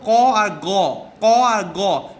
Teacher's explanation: ঠিক আছে, ক আর গ মুখে 5-6 বার উচ্চারণ করো, হাঁ করো, দিয়ে দেখো ক গ বলবার সময় মুখের সামনের দিকে ঠোঁট, দাঁত, জিভ, টাকরা এগুলো কোনোটারই ব্যবহার হচ্ছে না, কিন্তু জিভের পিছন দিকটা ব্যবহার হচ্ছে। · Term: ভেলার সাউন্ড